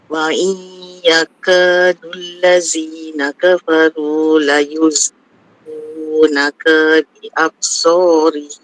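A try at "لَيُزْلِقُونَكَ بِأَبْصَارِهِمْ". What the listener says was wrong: Ka tak panjang, ambil ulang daripada la yuzliqunaka bi absarihim.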